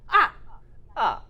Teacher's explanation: It's a quick drop from the highest pitch to the lowest pitch. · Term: falling tone